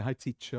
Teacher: in standard English R gets dropped in the end of the words and that's what we follow so you don't have to say